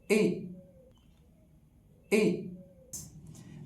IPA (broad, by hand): ɪ